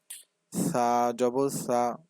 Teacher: সা টা নরম করে জিহ্বার আগা সামনের উপরে দুই দাঁতের আগার সাথে লাগিয়ে